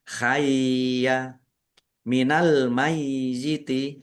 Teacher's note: Alhaya alif lam qamariyah ditandai lamnya dibaca sukun. Ya ada tasdidnya dibaca dobel dibaca khai dulu.